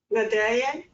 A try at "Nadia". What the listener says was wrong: It's nay. Yes, the D is silent. Yes, it's written in French.